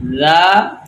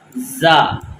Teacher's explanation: پہلا جو ذال ہے اس میں سیٹی کی آواز نہیں ہے، لیکن جو دوسرا زا ہے اس میں آپ نے سیٹی کی آواز دینی ہے، زا۔